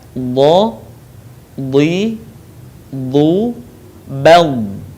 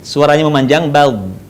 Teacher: Dia punya sifat yang namanya istitalah, di mana suara kita harus memanjang.